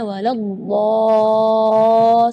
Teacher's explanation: Mad di situ kita harus panjang membacanya 6 harakat karena di situ hukumnya mad lazim kalimi mutsaqqal, jadi membacanya waladhdall 6 harakat.